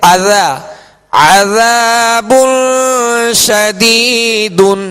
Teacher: یہاں عذا ذال نرمی کے ساتھ پڑھیں گے، ذال کے ساتھ الف مدہ ہے، ایک الف کی مقدار کھینچ کر ادا کریں گے، مگر ذال میں نرمی پیدا کریں گے، ذال میں سختی نہیں ہوگی.